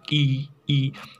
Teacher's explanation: तो क्या होता है कि जिस स्वर को चरण में जीभ का अग्रभाग काम करता है, जैसे कि ई बोलते हैं ना, ई ई, तो आपका जीभ है वो सामने की तरफ थोड़ा सा निकल जाता है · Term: अग्रस्वर